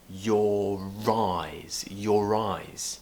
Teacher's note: We'll just say your. But because the next word, eyes, begins with a vowel sound, I, we're going to join the R at the end of your